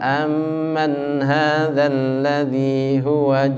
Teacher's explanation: perhatikan di situ mim mati aman itu didengungkan yang lama